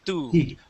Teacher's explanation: in Spanish when you pronounce a T, your tongue touches the back of your teeth, like when you say the word tu.